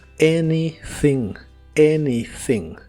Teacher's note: La A del inicio se pronuncia como E y la TH es la TH suave de inglés que la hace soplando entre la punta de tu lengua y los dientes de arriba.